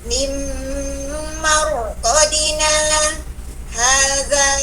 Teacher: Wakaf baik-baik kita 2 harokat, tapi tidak boleh mengambil napas karena ada sakta di atasnya. Tidak boleh ambil napas, kita wasol.